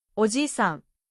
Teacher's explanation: The I sound is extended smoothly. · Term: long vowels